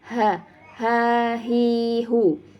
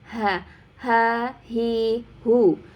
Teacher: huruf hal ini adalah huruf tenggorokan atau huruf Al halqi Dimana tempat keluarnya dari tenggorokan bagian bawah ya daerah pita suara